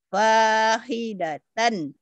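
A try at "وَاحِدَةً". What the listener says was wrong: Bukan tan.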